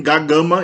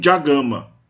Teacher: no caso das velares, ga e ka, a consoante do prefixo é palatalizada